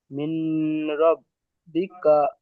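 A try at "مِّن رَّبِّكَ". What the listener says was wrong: মিন নয়, মির রব্বিকা হবে।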